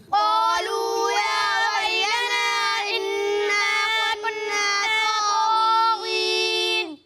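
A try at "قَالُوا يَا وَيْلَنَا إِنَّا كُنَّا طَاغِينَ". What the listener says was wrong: آپ یا ویلنا کو کم کھینچ رہے ہیں، اسے زیادہ کھینچیں. ٹھیک ہے، قالوا یا ویلنا انا كنا طاغین.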